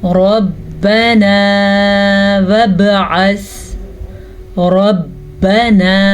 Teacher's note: را کو پر پڑھیں گے را پہ زبر کی وجہ سے